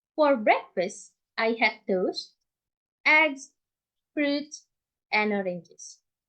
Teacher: And then the last pattern, fall rise intonation, used when making lists. The item before last use rising intonation, and the last item use falling intonation to signal that we have done our sentence.